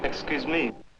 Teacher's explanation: the French speaker has a heavy stress on me an English speaker would normally say excuse me with a heavy